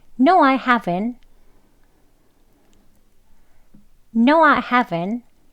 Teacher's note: haven 하고 트 소리까지 다 하지 않죠. haven까지만 합니다.